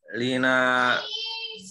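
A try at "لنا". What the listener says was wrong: Lana, bukan li, lana. Itu mufradat dasar semua itu. Masih keliru dibacanya.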